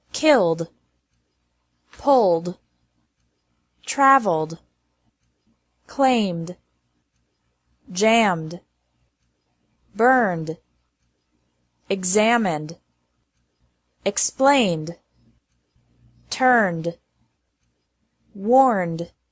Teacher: Ed is pronounced like D after verbs ending in an L, M, or N sound.